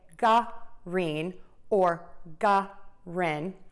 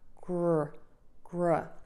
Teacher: the key is is to say this smoothly without adding an uh sound between